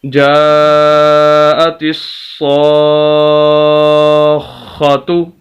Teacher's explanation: یہ صاد اور خا کو ہلکی سی آواز ہم نے روکی اور سخت کر کے پڑھا